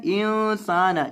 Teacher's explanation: اخفاء مع الغنہ یعنی اخفاء کرنا, نون کی آواز کو ناک میں چھپا کر پڑھنا اور اس کے ساتھ گنہ کرنا